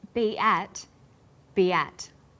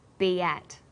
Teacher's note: Be ends with the vowel sound e, and at begins with vowel a. Linking these words together with the y sound, we have be at.